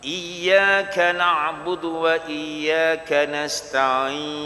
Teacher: Dia muncung, dia panggil ismam waqaf.